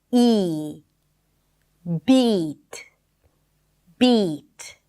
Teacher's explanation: we're going to start with a high vowel sound. That means that the tongue rolls forward to produce that sound.